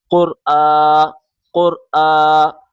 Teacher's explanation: اگلا لفظ دیکھیں، قاف را پیش قر، قاف را پیش قر، حمزہ کھڑا زبر آ، یہ حمزہ پڑھا جائے گا، الف نہیں، الف کے اوپر اگر کوئی اعراب آ جائے، زبر زیر پیش کھڑا آ جائے تو پھر وہ الف نہیں پڑھا جاتا بلکہ حمزہ پڑھا جاتا ہے۔ حمزہ کھڑا زبر آ، کھڑے کو ایک الف کے برابر کھینچ کے پڑھیں